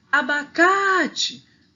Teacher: a sílaba forte tá na penúltima então ela é paroxítona